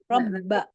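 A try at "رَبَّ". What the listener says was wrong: Benar-benar ba, nggak ada suara yang bisa mengalir lagi. Jadi benar-benar berhenti aja. Ba. Iya, seperti hamzah. Ba. Kalau masih nah berhentinya kan nggak boleh, harus ba. Cuman maksudnya huruf ba, ya kayak huruf jim, kayak huruf kaf.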